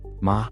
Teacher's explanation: Ma mom high flat